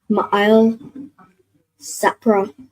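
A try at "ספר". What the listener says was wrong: So not Sapra, but that last part. So Sa and then the Pa and Ra are joined. So what sound would that make with the Pa and the Ra joined? Sapar. So Ma'il Sapar.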